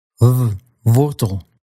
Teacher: with this sound, you're going to bring your bottom lip up towards your upper teeth, but you're not going to let them touch. That gives you a sound that has a bit of a w flavor and a bit of a v flavor and a whole lot of Dutch flavor.